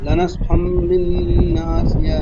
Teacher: এখানে ইকলাব হবে, তানবিনের পরে বা এসেছে, তাই তানবিনকে মিমের দ্বারা পরিবর্তন করে পড়তে হবে।